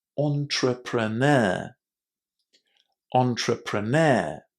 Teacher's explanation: The big difficulty here is pronouncing this word with the stress on the last syllable entrepreneur and pronouncing that initial e as o